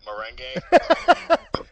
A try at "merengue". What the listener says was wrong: You gotta roll your R's, dude.